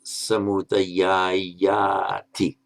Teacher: If you add the T on, this final vowel automatically lengthens. It's purely a phonetic phenomenon.